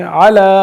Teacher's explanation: صلی علی نہیں پڑھیں گے, صلی علی. لام کے اوپر کھری زبر ہے, اس لیے ہم اس کو ایک الف کی مقدار کے مطابق کھینچ کے پڑھیں گے